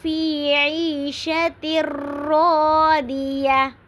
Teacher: عیشہ پہ بھی یائے مدہ ہو رہی ہے کیونکہ یا ساکن سے پہلے زیر آ رہی ہے۔